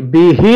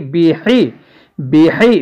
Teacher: زیر حی، بی حی، بی حی، بی ہی نہیں پڑھیں گے، ہا کی آواز سینے سے نکلتی ہے، اور ہا جو خا کے ساتھ والی ہے اس کی آواز حلق سے ادا ہوتی ہے